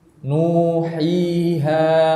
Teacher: maka suara yang keluar ini keluarnya dari al-jawf, yaitu rongga tenggorokan dan rongga apa? Mulut. Maka kita harus membuka kedua rongga tadi, tidak boleh kita tutup. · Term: huruf mad